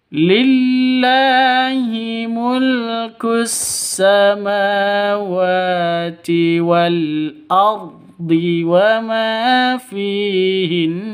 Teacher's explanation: Nun tasydid gunnah musyaddadah dengung, ya. Karena berada di waqaf di akhir kalimat berarti cara bacanya harus ditahan, didengungkan selama 2 ketukan.